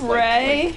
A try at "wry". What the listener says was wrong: rye. rye, not ray. It's rye. W-R-Y is rye.